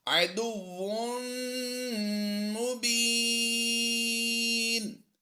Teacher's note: عدو تنوین کے بعد حروف یرملون میں سے میم آ گئی تو ہم نے کیا کرنا ہے؟ یہاں پر غنہ کرنا ہے. یہ ادغام مع الغنہ ہے.